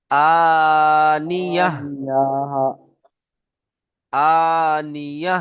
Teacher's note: আনিয়া বলে ছেড়ে দিলে হবে না, শেষে হা উচ্চারণ করতে হবে। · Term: হা সাকিন